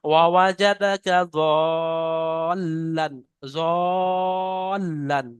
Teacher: ওয়াজাদাকা ওয়াজাদাকা জালান ফাহাদা। হ্যাঁ, লামের উপরে তাসদিদ আছে, তাহলে লামটাকে দুবার উচ্চারণ করতে হবে। ওয়াওয়াজাদাকা যাল্লান, যাল্লান, লামটা দুবার পরিষ্কার উচ্চারণ করেন।